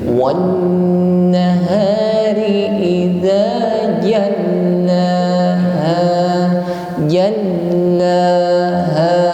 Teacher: Jal huruf lam bertasydid maka ditekan membacanya.